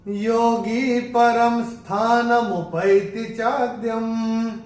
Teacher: अनुस्वार के बाद जब स आएगा तो अनुस्वार का उच्चारण होगा म